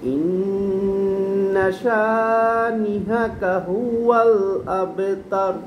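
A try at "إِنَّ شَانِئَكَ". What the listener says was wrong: আপনি ইন্না শানি হা বলছেন, হাকা হা হয়েছে, আ হয় নাই। শানি আ আ শানি আ শানি আকা। না ওই হা হচ্ছে হ্যাঁ, শানি আ। শানি আ, শানি আকা,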